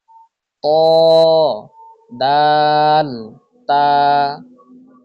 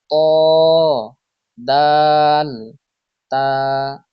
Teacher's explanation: 11 number মাখরাজ, জিহ্বার আগা সামনের উপরের 2 দাঁতের গোড়ার সঙ্গে লাগিয়ে উচ্চারিত হয়